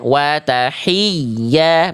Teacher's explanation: Jadi Bunda harus menekan huruf ya agar hi-nya tidak terasa lebih panjang, jadi panjang kayak matobi'i. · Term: Ya tasydid, ya naber